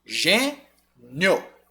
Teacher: ele sai do som fraquinho do i e vai pro som forte do o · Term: ditongo crescente